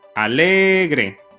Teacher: Es también grave y llana y lleva el énfasis en la penúltima sílaba.